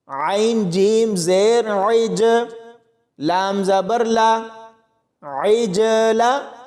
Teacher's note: یہاں پر عین کو جیم کے ساتھ ملائیں گے تو یہاں قلقلہ بھی ہوگا اور عین کی آواز کو حلق سے ادا کیا جائے گا